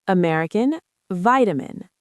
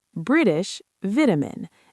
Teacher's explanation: Different first syllable stress and different vowel sound.